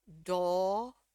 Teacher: di sini dia pakai o ya o dan agak sedikit panjang